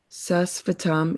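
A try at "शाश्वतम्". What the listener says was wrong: Shashvatam. S has that sign. So sh.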